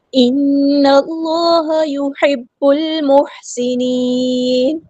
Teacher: نون پہ غنہ زمانی ہو رہا ہے، 2 کاؤنٹ رکیں گے. اللہ کا جو لام ہے ہیوی ادا کریں گے.